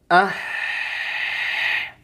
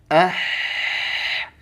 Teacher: Dia punya sifat huruf H ini. Yang pertama adalah hamas. Udaranya harus mengalir. Ah. Ngalir ya.